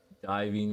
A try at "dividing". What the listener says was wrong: they mean to say dividing but they keep saying it wrong diving dividing are you Miss you're missing a d